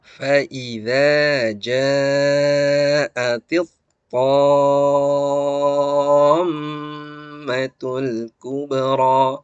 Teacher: di sini karena ada mim bertasydid, maka mimnya harus didengung. Karena hukum mim tasydid dan nun tasydid adalah dengung.